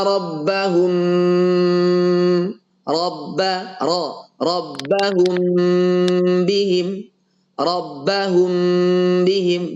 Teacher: kita samarkan mimnya otomatis karena dia samar tanpa tekanan